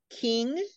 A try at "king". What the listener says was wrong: You have to have the ing sound on the end.